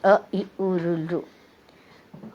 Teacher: पहला जो ह्रस्व स्वर है वो शुद्ध स्वर है, मुख्य स्वर है। वो एक ही मात्रा से बोला, एक चट्टी बजाओ इतनी देर में बोला जाता है